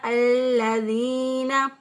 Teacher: لام کو اسی طرح مضبوطی اور قوت کے ساتھ، کیونکہ اس کے اوپر شد ہے، مضبوطی اور قوت کے ساتھ ادا کیا الَّذِينَ، ذال زیر یا دی، یا ساکن سے پہلے والے حرف کے نیچے زیر، اس یا کو 1 الف کے برابر لمبا کریں گے، یہ یا مدہ کہلاتی ہے، جس یا کو لمبا کیا جاتا ہے اس یا کو مدہ کہتے ہیں.